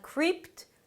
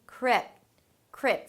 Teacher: somewhere between ee and eh